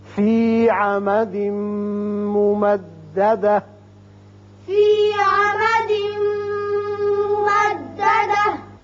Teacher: فی عمد تنوین کے بعد میم ہے، ادغام غننے کے ساتھ ہوگا. یہ تا ساکن ہو جائے گی، ہا کی آواز نکلے گی